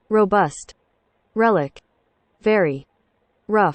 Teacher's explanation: The English R is called the alveolar approximant